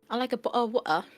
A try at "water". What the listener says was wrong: Water. They actually pronounce the T. I think people like don't realize. Most British people actually pronounce the T like T, like water, bottle of water.